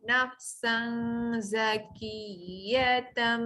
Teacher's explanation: Masuk bunyi mim hampir dapat bibir, dengung panjang.